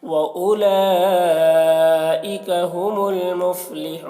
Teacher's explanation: اور یہاں پر جو مد ہے مد متصل ہو رہا ہے، ہم المفلحون یہاں پر وقف کریں گے تو مد عارض وقفی ہوگا